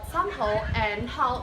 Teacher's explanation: The AU sound in word somehow and how is closing diphthong.